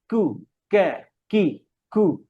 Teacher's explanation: সব কাফ, কু, deepest of the tongue, একদম জিহ্বার গোড়া, উপরে শক্ত জায়গা থেকে